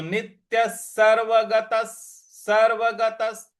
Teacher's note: शोश्याह-एवाचा; इसी प्रकार, अगला शब्द नित्यः है, 'नि' के बाद आने वाले आधे 'टी' पर जोर देने की आवश्यकता है; ' या' के बाद आने वाले विसर्ग का उच्चारण 'सह' की तरह होना चाहिए। अतः नित्यः सर्वगतः, सर्वगतः; 'गताह' के बाद आने वाले विसर्ग का उच्चारण भी 'सह' की तरह ही किया जाना चाहिए। · गत के बाद जो विसर्ग है उसका उच्चारण भी हमको स ले आना है